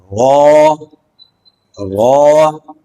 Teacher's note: را کا مخرج ہے زبان کی پشت جب اوپر کے دانتوں کے مسوڑوں سے لگے۔ یہ زبان کی پشت ہے، اور یہ زبان کی پشت جب اوپر کے دانت ان کے مسوڑوں سے لگے تو اس وقت یہ لفظ ادا ہوگا۔